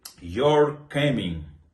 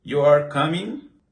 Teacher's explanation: with the rising intonation. Now it's a question.